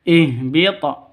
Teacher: ha ini keluarnya dari tenggorokan paling bawah